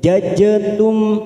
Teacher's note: Jajatum ada huruf jim sukun kita pantulkan, namanya bacaan qalqalah sugro